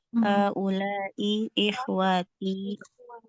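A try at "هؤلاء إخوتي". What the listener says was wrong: Pendek ya. Nah, dibacanya pendek.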